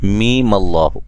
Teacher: لام پہ جب مد کریں گے اس کے بعد میم پہ غنہ کرنا ہے ایک الف کی مقدار کے برابر